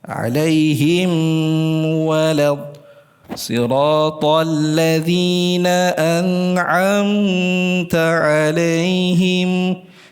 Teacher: memanjangkan dengan dengung yang lebih ya ditahan agak lama misalnya alaihim walad sirathalladzina anamta alaihim di situ sudah termasuk apa overgah dia terlalu lama di dalam memanjangkan dengungnya.